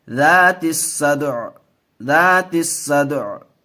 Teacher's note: عین کی آواز آئے گی آخر میں، حرکت کی نہیں